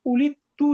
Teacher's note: যখন দাল আর তা পাশাপাশি চলে আসবে, তখন দাল, তায়ের প্রভাবে দালটা তা হয়ে যাবে, এরপর দুটো তা আবার একত্রিত হয়ে যাবে। · দাল আর তা পাশাপাশি যদি আসে, এই দুটো একত্রিত হয়ে যায়, ইদগাম হয়ে যায়